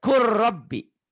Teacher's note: huruf mati ketemu huruf bertasdid tuh ya. Jadi huruf matinya jangan dibaca. Kul Robbi. Diidghamkan, dimasukkan.